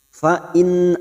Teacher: nun sukun bertemu hamzaah Idhar halq dibaca jelas tanpa mendengung